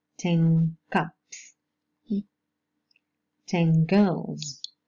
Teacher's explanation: alveolar sounds change into velar ones when followed by velar consonants. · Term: velar articulation